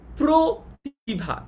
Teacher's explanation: সংবৃত হচ্ছে যেখানে উচ্চারণটা ও এর মতো হয়, অ এর উচ্চারণটা ও এর মতো হয়